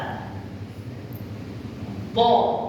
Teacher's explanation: Bila sebut bo, semua lidah terangkat pergi ke langit. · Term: isti'la